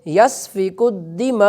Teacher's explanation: حمزہ سے حرکت ختم ہو جائے گی لیکن حمزہ کی آواز آخر میں آئے گی وقف کی صورت میں، تو ہم پڑھیں گے یسفک الدماء، بس ہم آگے زبر کو پڑھیں گے نہیں۔